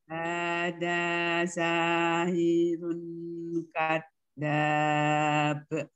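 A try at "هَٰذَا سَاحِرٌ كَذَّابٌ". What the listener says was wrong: Ya, gak boleh sahirun, tapi ang karena dia kaf ya. Sahirun kadab, ang.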